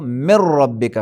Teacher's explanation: نون ساکن کا را میں ادغام ہونا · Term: ادغام متقاربین